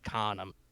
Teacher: he's got a very strong accent, so the A is like an R sound